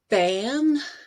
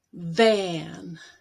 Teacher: notice how there is a lot more energy going into keeping the lips together or keeping the top teeth on the bottom lip